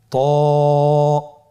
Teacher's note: ত এর মাখরাজ কোন জায়গা থেকে আপনারা স্ক্রিনে দেখতে পাচ্ছেন। জিহ্বার আগা, সামনের উপরের 2 দাঁতের গোড়ার সঙ্গে লাগিয়ে উচ্চারিত হয়।